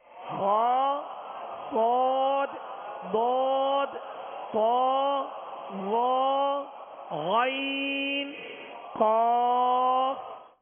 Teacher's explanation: خود بخود موٹائی پیدا ہوگی. تالو کی جانب جو ہے جڑ زبان کو بلند کرنا ہے، یہ طریقہ ہے اس کے پر کرنے کا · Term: حروف مستعلیہ